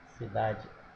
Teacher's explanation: E quando nós falamos a palavra, observe que a sílaba tônica é o dá. Ó. Cidade, a sílaba tônica é o dá. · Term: paroxítona